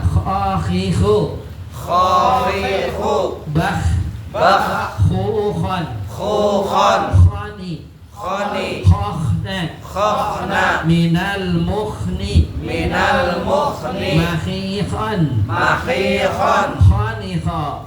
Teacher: tenggorokan paling atas ada 2 huruf, ya, yaitu kha dengan ghain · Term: huruf kha